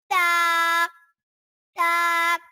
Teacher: یہ زبان کی نوک اور اوپر کے دانتوں کی جڑ سے ادا ہوتا ہے